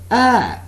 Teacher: there is no glide from one vowel sound to another